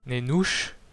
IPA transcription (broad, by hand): ne'nuʃ